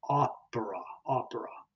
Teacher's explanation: an open o which is a as in bot